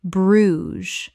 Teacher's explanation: One syllable in natural English. The ges makes a z sound.